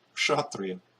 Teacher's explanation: Ka is always followed by retroflex sha, in my experience.